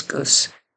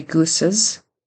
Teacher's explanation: He forgets the plural Z sound at the end. He just says goose.